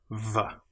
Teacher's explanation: the VV as we've already mentioned is with your top teeth on your bottom lip v. And you feel the VV vibration.